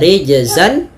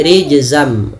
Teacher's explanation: Tanwinnya masukkan, idgham memasukkan, berarti masukkan tanwin ke huruf mim. Awalnya rijzan, ketemu mim menjadi rijzam, nunnya diganti dengan mim. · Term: idgham bi gunnah